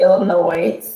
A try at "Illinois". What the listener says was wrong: Illinois with no S.